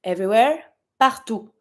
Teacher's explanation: You don't pronounce the last T, it's not a R.